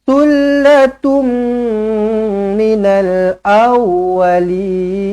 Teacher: jumpa dengan mim sabdu rapatkan bibir dengungkan dua harakat